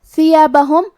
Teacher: ثا کی ادائیگی زبان کے سر اور اوپر والے دانتوں کے اندرونی کناروں سے ہے